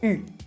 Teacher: Porque es la mezcla entre una I y una U, con la boca redondeada. Con los labios redondeados de U, digo una I. U. Esa es la U francesa.